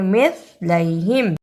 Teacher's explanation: اسے مثلیہم نہیں پڑھنا، سا کی جگہ پہ سین کی آواز نہیں آنی چاہیے